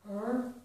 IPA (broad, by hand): r